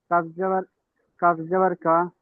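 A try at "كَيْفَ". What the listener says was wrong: ইয়ার উপরে সাকিন আছে, ইয়া সাকিনটা কাফের সাথে মিলিয়ে নেন। কাফ ইয়া জাবার কাই।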